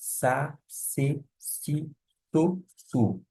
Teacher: Essa letra é o equivalente ao nosso S. O S, gente, é bem fraquinho, como se fosse sibilante.